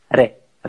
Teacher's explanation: a very like rapid movement of the tip of the tongue to the roof of the mouth like this. Re, re, yeah. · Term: flap T